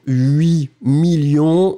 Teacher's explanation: quand on va le mettre, le combiner avec 1000 ou 100 ou millions, on ne prononce pas le T final.